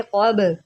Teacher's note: बा जो है ये हरूफ क़लक़ला में से है, यहाँ पर हम क़लक़ला करेंगे। इसको आप कब नहीं पढ़ेंगे, इसको आप पढ़ेंगे क़ब।